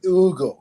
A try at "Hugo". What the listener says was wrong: No, it's Hugo. Hugo. You don't pronounce the H like we do, okay? It's different.